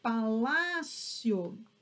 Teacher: Observem que agora a sílaba tônica, ela está na penúltima sílaba.